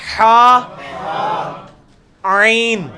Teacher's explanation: وسط حلق سے نکلے گا حا, عین